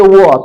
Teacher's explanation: व का उच्चारण स्थान दंत और ओष्ठ या दंत ओष्ठ से होता है।